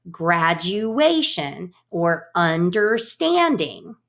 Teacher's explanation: a pattern that is alternating stressed and unstressed